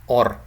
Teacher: is quite open, is an open or open mid vowel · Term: open mid O